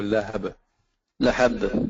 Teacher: But there is a qalqala at the ba, so lahab. Lahab.